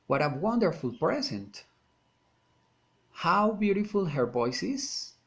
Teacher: Exclamatory sentences, falling intonation.